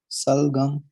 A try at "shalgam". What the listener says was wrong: No, it's not salgam. Work on the sh sound.